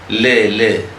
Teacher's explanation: Lateral sound ല്. നമ്മുടെ നാവിൻ്റെ 2 സൈഡിലൂടെയാണ് എയർ പുറത്തേക്ക് വരുന്നത്.